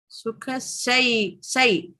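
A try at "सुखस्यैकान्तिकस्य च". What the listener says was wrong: Yai. No, not the English I. It's a yai. Year. I sound is there, but the I is joined to a year. So it sounds like yai.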